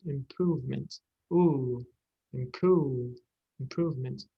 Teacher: improvement, prove, is not a diphthong, it's one sound.